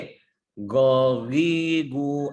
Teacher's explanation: Diucapkan di makhraj qaf dan tidak meninggikan lidah ke langit-langit mulut.